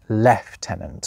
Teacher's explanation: In the armed forces of pretty much every other English speaking country the rank is pronounced LEF-TENANT.